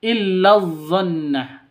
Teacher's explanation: illa ini pendek karena masuk langsung masuk ke d yang bertasydid